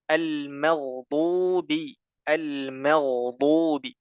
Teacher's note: tipiskan mimnya ghairil ghairil magubi tipis kemudian gainnya baru tebal ya gain sukun sebelumnya harakat fathah atau damah maka dibaca dengan tebal